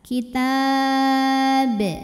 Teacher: Dan baknya dihukumi dengan qalqalah kubra karena huruf qalqalah sukunnya karena berhenti bukan sukun asli. Maka dibaca memantul dengan pantulan yang besar.